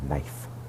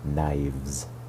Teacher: The F in knife is soft and becomes hard in the plural knives.